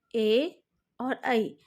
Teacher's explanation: ए और ऐ के उच्चारण में कंठ और तालु दोनों का सहयोग रहता है, उसके सहयोग से ही इन दो वर्णों का उच्चारण होता है।